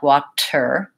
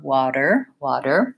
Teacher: if I use a true T it would sound like Wachter there'd be a puff of air Americans don't do that they leave that puff out they also turn their voice on so it really sounds like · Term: flap T